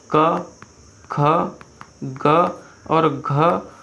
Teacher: तो जो घ का उच्चारण स्थान होता है वो हमेशा कंठ होता है